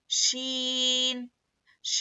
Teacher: जुबान के बीच के हिस्से को ऊपर के टालू में लगाने से श अदा होता है